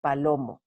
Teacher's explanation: es decir el acento está en la segunda sílaba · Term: palabra grave